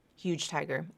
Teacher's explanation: Here we have a final J consonant linking to a voiceless T consonant. So the voicing of the J in huge is either reduced or dropped completely.